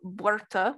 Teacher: and that is pluralized into berta with first syllable stress so despite the fact that it has a weak vowel in the initial syllable you do see stress on that syllable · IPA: bwər.tʰə